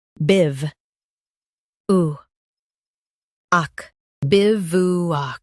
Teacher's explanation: Stress biv and keep oo short.